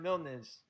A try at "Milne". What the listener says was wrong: Milne. The S is silent.